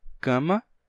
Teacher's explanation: A gente tem nasalização regressiva na palavra cama, por exemplo, que a gente pronuncia cama e não cama, porque o M transfere a sua nasalidade para o A que vem antes, então fica cama.